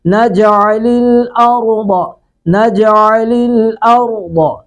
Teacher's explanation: ضاد کو پر کر کے پڑھیں گے، را کو پر کریں گے